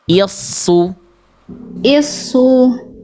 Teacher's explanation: Hamzahnya tipis, shadnya tebal. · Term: shad tasdid